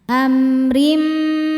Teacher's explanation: berharakat kasrah tanwin maka rnya tipis amrim Rim. Rim ada hukum idghamunah.